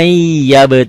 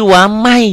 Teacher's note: Tulisannya ada bunyi n-nya bacaannya n-nya hilang melebur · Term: Idgham Bighunnah